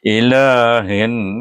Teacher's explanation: Oleh kerana nun ini huruf syamsiah, maka walaupun kita mengidgamkan pada huruf nun tapi tetap kita baca nun itu dengan dengung dengan wajibul ghunnah